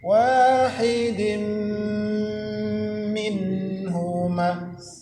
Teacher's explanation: nun mati berjumpa dengan ha izhar, izhar artinya jelas. · tanwin berjumpa dengan mim idgham bi gunnah, dimasukkan ke huruf mim kemudian berdengung